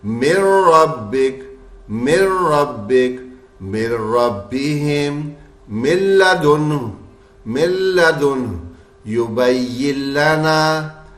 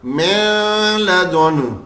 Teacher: नून की आवाज़ आ ही नहीं रही, गुन्ने की आवाज़ आ ही नहीं रही